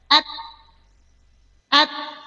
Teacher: Nahisan maulil usul usuli tempat tumbuh tempat keluarnya sanaya gigi seri atas huruf ta dia hams percikan ada napas keluar